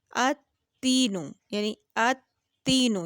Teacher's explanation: تا کی جو آواز آ رہی ہے یہ ڈبل کر کے آ رہی ہے، 2 بار ہم اس کو پڑھ رہے ہیں اتینو. تو یہ تشدید والا ہے، اس لیے اس کو ہم نے دوہرا کر کے پڑھا.